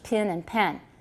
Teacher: some people don't distinguish between pin and pen especially in the south and also in black english